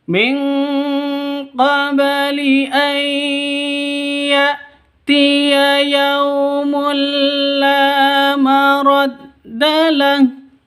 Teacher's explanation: tanwin bertemu dengan lam, masuk ke lam tanpa dengung, idgham bila gunnah